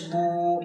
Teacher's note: واو مدہ کو ایک الف کے برابر کھینچ کر پڑھنا ہے